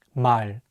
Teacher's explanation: In Korean, the L sound is much lighter without any tension.